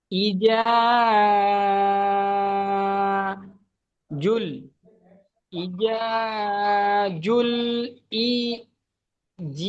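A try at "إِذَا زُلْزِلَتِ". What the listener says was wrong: জি টান দিচ্ছেন কেন? এখানে হারাকাত আছে, হারাকাতকে তাড়াতাড়ি পড়তে হবে। ইদা জুলজিলাতিল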